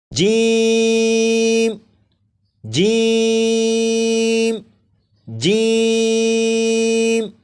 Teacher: جیم کو 3 الف کے برابر کھینچ کر پڑھیں گے